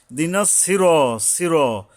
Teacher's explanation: এই যে সোয়াদটা হলে হরফে ইস্তিওয়ালা, মানে মোটা করে পড়তে হয়, এই জন্য আকার উচ্চারণ করতে হয় না।